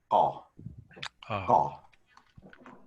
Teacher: It sort of sounds like a G, but it's not really voiced. There's not really your vocal cord shouldn't be engaged during that. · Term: uvular